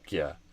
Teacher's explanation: And then they're dropping the Y. There's a hidden Y between the G and the U in regular.